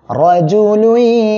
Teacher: জিম পেশ জু, রজু, লাম ইয়া দুই পেশ লুই, তানবিনের পরে ঈদগামে বা গুন্নার অক্ষর ইয়া আসছে, গুন্নার সাথে মিলিয়ে পড়বেন